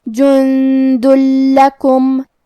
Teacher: ہمیں یہ تنوین کو لام میں ملا کے بغیر غنہ سے لیکن تشدید کے ساتھ یہ حکم کو ادا کرنا ہے. جند لکم.